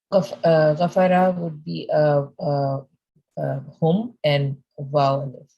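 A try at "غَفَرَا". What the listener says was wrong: No, Ghafara. Ghafara with the alif.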